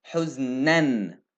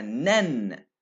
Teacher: It's like you have two noons there, noon and noon sakina, right? So it's pronounced, the tanween, I pronounced it as a noon sakina, nan as a noon sakina.